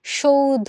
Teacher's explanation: ওকে, সৌধ শব্দের সঠিক উচ্চারণ, যদিও বানানে দন্তস্ব আছে কিন্তু আমরা যখন উচ্চারণ করি তখন কিন্তু আমরা এটার উচ্চারণটা তালব্য স দিয়েই করব, এবং এখানে যে ধটা আছে, ধয়ের সাথে যে অধ্বনিটা আছে সেই অধ্বনিটা ও এর মতো উচ্চারণ হয়ে